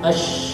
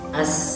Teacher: Kalau shin itu tebal, ash, ya. Kalau sin tanpa titik itu tipis, as.